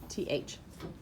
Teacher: It's where my tongue sticks to my teeth and makes the sound, TH, in the word thimble.